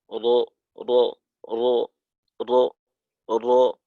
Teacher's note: র হরফটি আদায় করার সময় জিহ্বার মাথা কেঁপে ওঠার কারণে একটি র এর পরিবর্তে কয়েকটি র হতে চায়। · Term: তাকরার